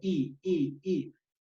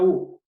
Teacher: Por eso decimos la I, la lengua se va hacia adelante y posterior, cuando pronuncio la U, se va para atrás. Por eso decimos que la I es anterior, I. Posterior la U.